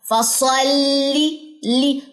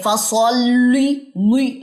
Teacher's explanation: साद का मखर अलग है लाम का मखर अलग है लेकिन जॉइनिंग आपने करनी है लाम को मोटा नहीं करना क्योंकि साद मोटा है फसली ली कुछ लोग ऐसे पढ़ते हैं फसली ई लाम मोटा · لام کو موٹا نہیں کرنا کیونکہ سواد موٹا ہے